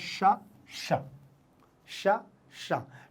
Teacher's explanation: मूर्धा उच्चारण होता है इसलिए इसमें झटके से जीभ को ऊपर ले जाना पड़ता है